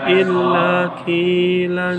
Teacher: qaf itu masuk ke huruf tebal, tetapi ketika dia berkasroh maka ketebalan atau gemanya berkurang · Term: Tafkhim nisbi